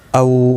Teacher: واولین ہے، تھوڑا نرمی کے ساتھ کھینچ کر ادا کریں گے